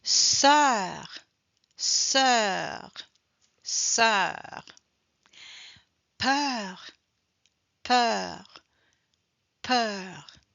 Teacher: So when we pronounce the last letters like a consonant, automatically the sound E is more open. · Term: plus ouvert